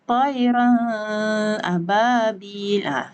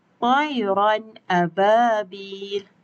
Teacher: Yang betulnya adalah Tayran ababil dengan tanpa dengung